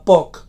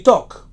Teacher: La commutació del so bilabial oclusiu sord de la paraula poc pel so dental oclusiu sord fa que en resulti toc